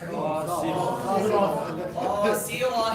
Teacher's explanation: We should drop the tanween and pronounce the ta as a ha sakin.